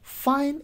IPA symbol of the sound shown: f